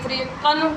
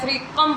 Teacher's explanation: تنوین کے بعد میم ہے، میم حروف یرملون میں سے ہے اور حروف یرملون میں سے اگر تنوین کے بعد کوئی حرف آ جائے تو وہاں پہ اظہار شفوی وہاں پہ ادغام ہوتا ہے، یعنی فریقن کی بجائے فریقم پڑھیں گے، یعنی پچھلے تنوین کو اس حرف کے اندر ملا کر پڑھیں گے